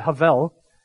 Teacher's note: is the it is the idea of a breath in fact it is a very breathy word when you say the word Havel in Hebrew you actually have to aspirate breathe out two times in order to say the word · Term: two breaths